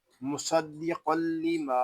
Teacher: یہاں صاد اور قاف دونوں کو ہم پر پڑھیں گے کیونکہ یہ دونوں حروف مستعلیہ میں سے ہے. دال مشدد ہے، اس کو جماؤ کے ساتھ ادا کریں گے.